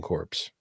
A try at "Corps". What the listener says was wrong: Core. The P is silent.